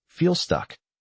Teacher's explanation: The L is pronounced, but the word flows. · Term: connected speech